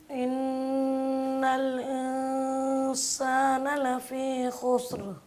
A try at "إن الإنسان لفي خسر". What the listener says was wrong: ان الانسان لفی خسر. انسان اس کو سختی سے نہیں پڑھنا. ان الانسان ان الانسان نہیں پڑھنا. ان الانسان لفی خسر. إنسان نہیں إنسان ان کو بھی غنہ کرنا ہے، اور اس کے بعد سین سے پہلی جو ہے ان الانسان